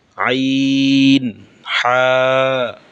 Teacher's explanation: কণ্ঠনালীর মধ্যখান থেকে 2টি হরফ উচ্চারিত হয়। হরফগুলো হচ্ছে আইন আর একটা হা।